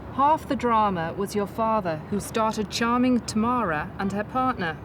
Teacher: the Liverpool accent has a non rotic quality where you don't pronounce the r that occurs after a vowel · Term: non-rhotic quality